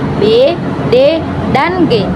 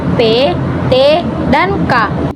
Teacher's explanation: Yang pertama, yang bersuara, yaitu b, d, dan g. Yang tak bersuara, yaitu p, t, dan k.